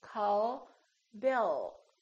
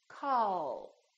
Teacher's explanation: touches right behind the upper teeth and it stays there so the American L is prolonged it's softer and longer